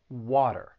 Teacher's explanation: do with the American accent and that is the flap t a flap T is going to sound like a soft D in Americans